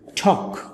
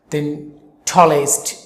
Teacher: কোন শব্দের শুরুতে টি থাকে তাহলে তার উচ্চারণ টি এর ক্ষেত্রে ট এর মতন না হয়ে ঠ এর মতো হবে